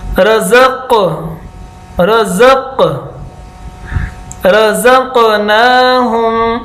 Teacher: रज़क़ थोड़ा सा मुश्किल इसलिए कि पहला लफ्ज़ जो है वो बारीक सीटी की तरह है, ज़, और दूसरा जो कौफ नुक्तों वाला है वो मोटा है